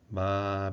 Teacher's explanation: Eh, no caso das vozeadas, há vibração das pregas vocais, das cordas vocais durante a sua realização. Não se interrompe a vibração, o som das cordas vocais.